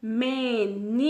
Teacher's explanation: ni, ele é a sílaba tônica, certo? Podem perceber que ele é a penúltima, porque a última é nó. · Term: paroxítona